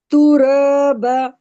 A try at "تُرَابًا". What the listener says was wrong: را نہیں، رو کو موٹا پڑھیں. با کو کھینچنا ہے. رو اور با کو برابر کھینچنا ہے. تو رو ب.